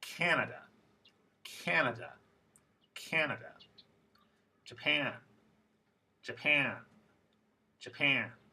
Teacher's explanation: the vowel in the stressed syllable is extra long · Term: word stress